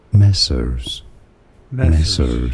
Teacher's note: Stress on that first syllable. Me. So it is messers.